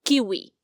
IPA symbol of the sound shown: k